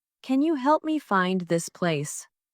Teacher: Stressed words are help, find, and place.